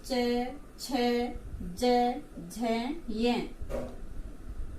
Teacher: ये ध्वनि है ये तालु से निकलती है तो इनका उच्चारण स्थान हो गया, च वर्ग का उच्चारण स्थान हो गया तालु।